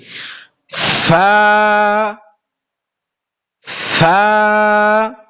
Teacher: হবে নিচের ঠোঁটের পেট সামনের উপরে দুই দাঁতের আগার সঙ্গে লাগায় সামনের উপরে দুই দাঁতের আগা নিচের ঠোঁটের পেটের সাথে লাগবে